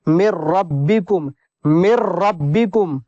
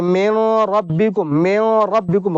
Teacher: تو یہاں پر ہمیں ادغام کریں گے، غنہ نہیں ہوگا، پورا بدل دیں گے ایک دم. میم کو ڈائریکٹ را میں ملا دیں گے، نون کو بالکل سائلنٹ کر دیں گے، ادغام تام ہوگا یہاں پر.